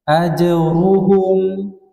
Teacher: Jim huruf tipis keluar dari tengah lidah